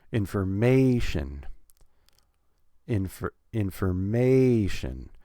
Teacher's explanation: Information, 4 syllables, we're going to put stress on the third syllable.